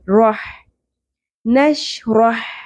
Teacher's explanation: رو کو پر کرتے ہوئے ہا کے مخرج پہ آپ نے فوکس کرنا ہے جو کہ ہم نے وسط حلق سے نکالنا ہے